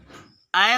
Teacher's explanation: ऐ वर्ण का उच्चारण स्थान कंठ तालु है